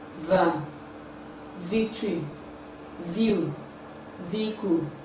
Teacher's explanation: It involves the coming together of the upper teeth and the lower lips for its production. Therefore, we can say it is a voiced, labiodental, and fricative sound. It can be realized at the initial, middle, and final positions of English words.